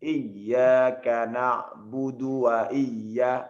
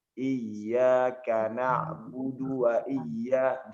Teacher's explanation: Langsung iyyaka na'budu wa iya. Jangan berikan space atau pemanjangan walaupun hanya sedikit di dalam dal ini.